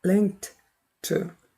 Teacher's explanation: 실제 이 발음은 문장 안에서 야금으로 t 소리밖에 안 들립니다. 그런데 link 다음에 t가 나오다 다시 또 한번 t 하니까 이 부분이 좀 긴 T 하나 있는 것 같은 느낌이 들어요. 그렇다고 막 생략을 해버린다는 게 아니라 자연스럽게 발음할 때 그렇게 음이 소실되는 효과가 나옵니다. · 이때 link 그 다음에 ed는 드 발음하면 안 돼요. link가 무성음이니까 ed도 드가 아니라 철자에 속지 마세요. 무성음 t로 발음이 됩니다. 그래서 link 한 다음에 t 한 다음에 다시 또 to가 왔나요?